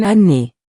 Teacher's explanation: If a vowel follows, like in année, the nasal sound disappears.